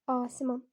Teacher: A uzun tələffüz olunur, amma açıqdır deyə götürmürük. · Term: açıq saitdir